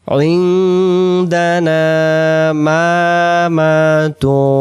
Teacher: আইন নুন জেরে আইন, ইকফা হবে। নুন সাকিনের বাম পাশে দাল অক্ষর পাইলে নুন সাকিন সেইখানে গোপন করে পড়তে হয়